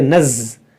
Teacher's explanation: زا میں جو ہے سختی ہے، اس میں وائبریٹ ہوتا ہے